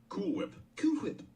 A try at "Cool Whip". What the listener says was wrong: why are you putting so much emphasis on the H